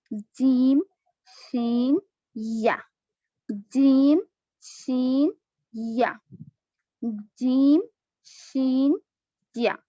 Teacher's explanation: جیم شین یا یعنی یہ وسط اللسان سے ادا ہوتے ہیں, یعنی زبان کا جو درمیانی حصہ ہے مڈل پارٹ آف دی ٹنگ اوپر کے تالو کو لگنے سے ادا ہوتے ہیں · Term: حروف شجریہ